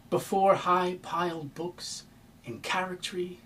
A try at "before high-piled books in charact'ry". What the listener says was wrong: You're rushing. You rush the second before high-piled books. Give us a chance to chew on what you've said without giving us another spoonful before we